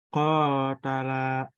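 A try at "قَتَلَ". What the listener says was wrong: Ta-nya pendek. Ulangi lagi.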